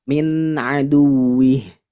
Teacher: Nun sukun bertemu dengan huruf ain. Nah, ini huruf izhar dibacanya jelas.